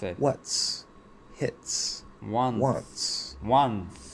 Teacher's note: producing a T. We're closing into the T position, but we're pushing the S through that position without actually making a T. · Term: TS illusion